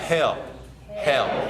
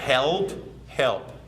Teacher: often the L's at the ends of sentences are swallowed or dropped